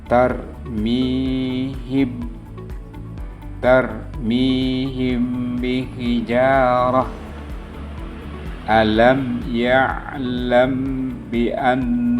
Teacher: ditahan kira-kira dua harakat Seraya mengeluarkan suara ikhfa dari pangkal hidung · Huruf ikhfa syafawi hanya satu, yaitu huruf ba. Cara membacanya ikhfa syafawi yaitu dengan suara yang samar antara mim dan ba pada bibir. Kemudian ditahan kira-kira 2 harakat.